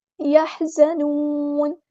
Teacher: نون کو ہم ساکن کر دیں گے وقف کرتے ہوئے، مد عارض بھی ہوگی یہاں پر